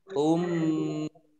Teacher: mim tasdid dibaca gunnah atau mendengung ditahan 2 harokat. Ummiyuna, nah yaknya juga dibaca double ada tasdidnya.